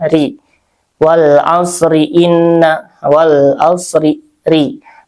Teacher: Kalau diwasalkan karena dia rya berharakat kasrah jadi tipis ya.